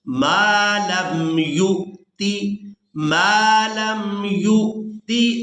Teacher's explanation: اب یہاں پر ہم نے یا کو حمزہ ساکن کے ساتھ ملانا ہے، تو جھٹکے کے ساتھ ادا کرنا ہے